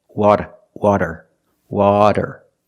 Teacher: it's not a rolled R it's a flap t or a fast D